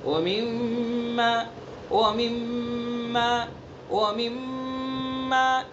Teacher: ومما، اس کے اندر غنہ کریں گے، حرف غنہ، میم مشدد ہے، ایک الف کے برابر ناک سے ادا کریں گے، ناک کے واسطے سے. ومما، ومما، ومما، ایک الف کے برابر رکیں گے.